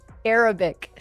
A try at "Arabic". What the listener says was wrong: You're putting the accents where they shouldn't be. Arabic.